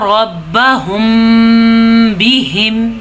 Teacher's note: قرآن مجید میں جب کبھی میم ساکن آ جائے اور اس کے بعد با آ جائے تو وہاں پہ اخفاء شفوی کا قاعدہ ہوتا ہے، یعنی کہ وہاں پہ ہونٹ بند ہو جاتے ہیں